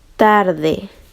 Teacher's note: el ápice de la lengua se va a colocar en la parte interior del incisivo superior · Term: dentales